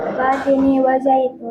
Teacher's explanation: Idgham syamsiah, cara membacanya yaitu alif alif lamnya di hilangkan atau dimasukkan ke huruf yang selanjutnya